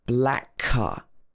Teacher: black ends in the sound k and car also starts with k so these two consonants which are the same um blend together